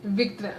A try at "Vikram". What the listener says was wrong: Yeah, but you gotta roll your R like his dad would. Vikram?